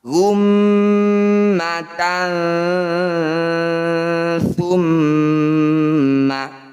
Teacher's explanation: bunyi fathah tanwin kita dengungkan dua harakat saat dengung lisan kita bergeser lidah kita bergeser dari posisi fathah tanwin menuju ke huruf ta gummatan tumma gitu ya disebut aus atau pertengahan pergeseran lidah itu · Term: Ikhfa ausat, ikhfa awsat